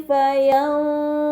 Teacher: Kemudian pada kata fayanzuru, terdapat nun sukun bertemu dengan huruf dha, ini dinamakan ikhfa hakiki, maka nun sukun dibaca secara samar dengan gunnah